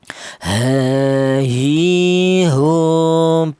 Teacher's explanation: Huruf H ini keluarnya huruf berasal dari pangkal tenggorokan atau tenggorokan bagian bawah